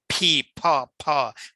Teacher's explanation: দুই ঠোঁট দিয়ে বাতাস বের হবে, ফি, এটাকে অ্যাসপিরেটেড সাউন্ড বলে, ফি ফ ফ, বিস্ফোরণ হবে মুখের মধ্যে।